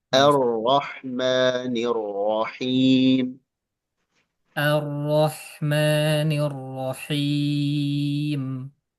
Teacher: Rnya tebalin tasdidnya. Pas tasdidnya tebal.